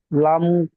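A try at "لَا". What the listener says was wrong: লাম টান দিন। লাম খাড়া জবর লা।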